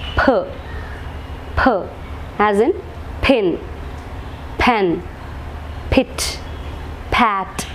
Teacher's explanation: the upper lip, becomes the passive articulator and the lower lip becomes the active articulator